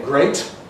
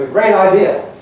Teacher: it applies at the end of words. So you've got, say, great, voiceless T, but a great idea, voicing it. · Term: T voicing